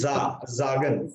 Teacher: Sagen. S is pronounced as Z when there is vowel after S. So it is za.